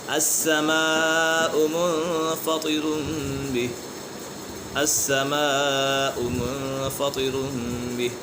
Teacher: یہاں پر مد متصل ہے حروف مد کے بعد حمزہ اسی کلمے میں تو اسی وجہ سے مد متصل ہوگا